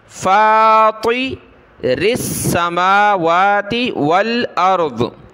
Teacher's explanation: را کو باریک کر کے سین کے ساتھ ملایا